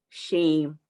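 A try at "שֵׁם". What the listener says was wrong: That's the A vowel. Got to learn your vowels.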